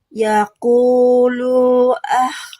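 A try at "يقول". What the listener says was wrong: Lu-nya pendek. Lu-nya pendek.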